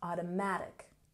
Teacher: We emphasize the third syllable here.